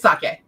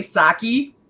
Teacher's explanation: emphasis in Japanese more often than not is on the first syllable but in English it's usually on the second